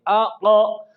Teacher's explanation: قلقلہ سے دونوں حرفوں میں فرق واضح ہو جاتا ہے، اس لیے قوف جہاں بھی ساکن آئے گی یا ہم خود ساکن کریں گے اس میں ہم قلقلہ یعنی اس قاف کے ادائیگی میں حرکت پیدا کریں گے، آقا۔ تو یہ زبان کی جڑ اوپر کے نرم تالو سے ٹکر کھائی ہے تو اس سے قوف ادا ہوا